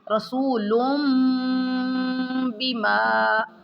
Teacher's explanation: تنوین کے بعد اگر با آ جائے جیسے رسول بما، ٹھیک ہے، تو یہاں تنوین کو میم میں بدل دیں گے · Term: اقلاب